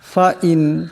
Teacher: নুন সাকিনের পর হা আসছে, এখানে ইজহার হবে, কোনো গুণা করা যাবে না